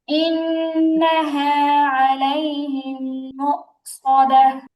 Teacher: ইন্নাহা নুনে টান হয়ে যাচ্ছে, নুনে টান হবে না, আর মুকসাদাহ তাটা হ্যাঁ হয়ে যাবে।